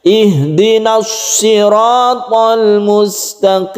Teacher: Shotnya kita sofirkan. Ihdinas, berdesis ya shotnya.